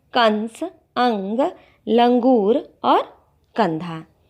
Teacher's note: अनुस्वार जैसे अंग है, अंग को ही केवल बिंदी के रूप में स्वीकार किया जाता है, उसे अनुस्वार कहते हैं। इसके उच्चारण में हवा केवल नाक से निकलती है